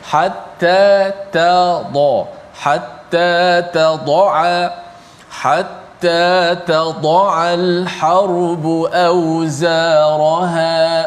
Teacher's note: Tad'a, huruf ta di hujung lidah, huruf dad di bahagian tepi lidah, huruf ain di bahagian tengah halkum.